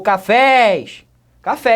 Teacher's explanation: a sílaba forte é última novamente estou trabalhando com uma palavra oxítona